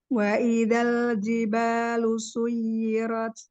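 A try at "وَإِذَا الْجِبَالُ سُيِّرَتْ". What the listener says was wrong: Eh, nanti ro tapi naik lagi sedikit ya. Tafimnya kurang kurang ambil.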